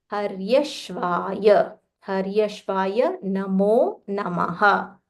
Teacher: So here it is half sh and full v. Sh is talavya sh.